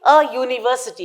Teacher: comes to University we are supposed to say a university because you here is pronounced like you and this is a consonant sound